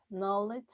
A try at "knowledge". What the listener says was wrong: It's kind of that short O, but everything else sounded great.